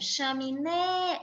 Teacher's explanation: Veja que o né, ele tem uma entonação mais forte do que as outras sílabas. Então, essa é a sílaba tônica, a última sílaba da palavra.